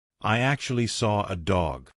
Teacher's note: I can't see an R, but I said an R. And that is because we have a feature called an intrusive R.